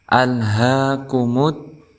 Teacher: Kemudian di al ini bukan termasuk huruf qalqalah, maka jangan sampai ada bunyi pantulan seperti al, tetapi kita tahan alhaakumut. Kemudian ada alif lam yang tidak dibaca jelas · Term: al-syamsiyah